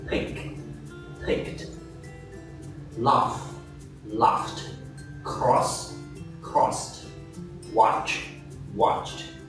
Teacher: it is pronounced t if the ending sound of the verb is a voiceless consonant